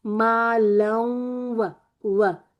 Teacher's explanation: لوں یعنی کہ نون کی بھی تھوڑی سی آواز آ رہی ہے